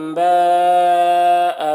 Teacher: با یہاں پر مد متصل ہے، اس مد متصل کو 3-4 الف کے برابر کھینچ کر پڑھتے ہیں